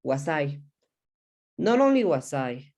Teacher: we joined the last sound of the s with the i